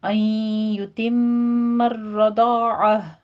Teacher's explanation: قاعدہ ہے اور آگے میم مشدد ہے، غنہ واجبہ کریں گے، رو کو مفخم پڑھنا ہے اور را کے پر تھوڑی سی تکرار ہوگی · این میں ادغام الغنہ کریں گے، یہاں پہ 2 کاؤنٹ کرنا ہے ، نون ساکن کا قاعدہ ہے اور آگے میم مشدد ہے،